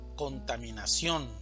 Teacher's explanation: La mayor fuerza de voz va a estar en ción